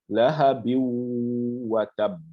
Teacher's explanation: Et on va faire un nasiment de 2 harakas environ 2 secondes.